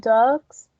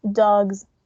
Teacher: so the s sound it's going to be voiced